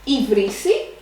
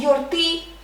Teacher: I vrisi, it has the accent in the second syllable from the end, and yorti that has the accent at the last syllable.